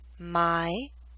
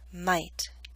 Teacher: The Y in my is longer because it's an open sound. T is a voiceless consonant.